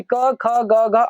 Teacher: क वर्ग यानी क, ख, ग, घ अंग का उच्चारण स्थान कंठ होता है